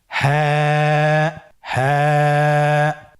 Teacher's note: হাফটি উচ্চারণের স্থান কন্ঠনালীর শুরু হতে অথবা আমরা যদি আরবিতে বলি হলকের শুরু হতে এটা এই হরফটি উচ্চারিত হয়। কন্ঠনালীর শুরু থেকে উচ্চারণ করুন।